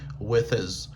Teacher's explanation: Donc l'on lié son consonne ça avec his, eh bien H là li vient pas aspirer encore, H là li perdu son li. Au lieu dit his, li vient gen son is. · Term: liaison